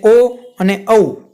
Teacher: ઓ અને ઔ જ્યારે તમે બોલો ત્યારે કંઠ અને હોઠ બંનેનો ઉપયોગ થાય છે. કંઠમાંથી પણ બોલાય અને તમારા હોઠ પણ એમાં ભાગ ભજવે છે.